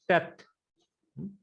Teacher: It does not give clear T sound, neither it gives clear TH sound. It is in between that. It's hard to distinguish.